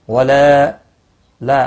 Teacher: الف مدہ ہے، ایک الف کے برابر کھینچ کر پڑھیں گے۔